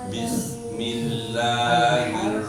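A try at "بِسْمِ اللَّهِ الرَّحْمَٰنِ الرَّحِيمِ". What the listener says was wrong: kurang ya Pak ya mulutnya kurang kebukaja ya kurang bis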